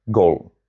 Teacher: The single most important word in this man's profession comes out as one pure unmoving vowel.